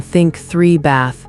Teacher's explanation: Between them there are two th sounds. Voiceless th as in think three bath. Your vocal cords don't vibrate.